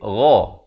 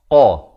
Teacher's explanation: qaf makhrajnya di pangkal lidah ini, di belakang bahagian lidahnya